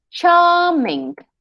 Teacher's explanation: English is not a rhetoric, as they say, rhotic language, where we don't say the R. So the R is there, but we don't say it.